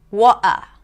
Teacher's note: Water in some dialects, where the T is replaced with a glottal stop. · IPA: [ˈwɔːʔə]